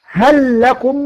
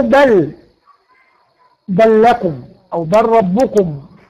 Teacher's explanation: هندغم اللام في اللام وتبقى لام واحده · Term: الادغام